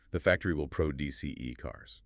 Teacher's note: As a verb, meaning to make, create, or manufacture something, the pronunciation rules dictate that the stress falls heavily on the second syllable.